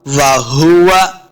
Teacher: वाव को पढ़ते हुए हमने अपने दोनों होंठ को गोल करना है ताकि वाव का मखरज सही अदा हो।